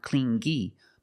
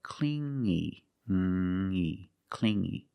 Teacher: You hear the sound only the nasal sound here, no G